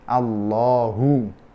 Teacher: Karena sebelumnya fathah, maka dibaca tafkhim.